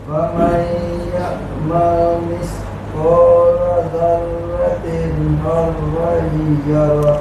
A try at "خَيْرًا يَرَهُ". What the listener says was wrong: Kha masuk ya, khairan yarah.